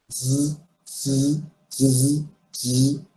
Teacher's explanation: জেড এর উচ্চারণটা একটু শক্তভাবে করতে হবে, কারণ এখানে হচ্ছে আপনার দাঁতের দুই পাটি আপনার লাগানো থাকবে, বাট ভিতর থেকে দাঁতের দুই পাটি লাগানো অবস্থায় জেডটাকে উচ্চারণ করতে হবে, জাস্ট লাইক এইভাবে, এভাবে।